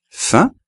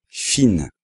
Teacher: como no hay una vocal después, pues se pronuncia la nasal, la combinación I más N, fin, pero la otra, vemos que hay una vocal al final, que es la E, y entonces ya no hay una nasal en la palabra y se pronuncia la I más la N.